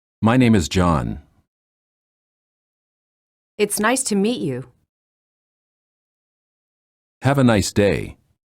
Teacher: Falling intonation lower your voice at the end of the sentence falling intonation is used in statements sentences that are not questions